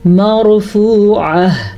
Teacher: مرفوعہ، را ساکن ہے اور اس سے پہلے زبر ہے تو اسی لیے را کو ہم پر پڑھیں گے. وقف کی وجہ سے گول تا گول ہا بن گئی تو ہم اس کو بھی گول ہا پڑھیں گے اور اسی پہ ہم وقف کر دیں گے.